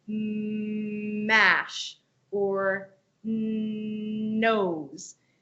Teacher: when you're holding out the M or n Sound it's naturally coming through that nasal passageway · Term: nasal sounds